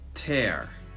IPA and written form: tɛr (tear)